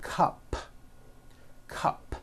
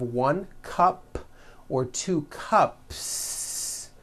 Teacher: if you add an S to the word cup to make it plural, the S you add also remains unvoiced